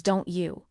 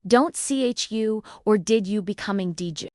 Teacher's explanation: The T and the Y often merge to sound like a CH sound. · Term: assimilation